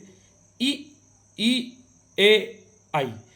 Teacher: तो देखिए अग्र भाग से यानी जीभ के आगे वाले भाग से ई, ई, ए, आई। इसमें जीभ का आगे का हिस्सा ज़्यादा प्रयोग होता है, या हम कह सकते हैं उस जीभ के आगे वाले हिस्से पर जोर ज़्यादा लगता है।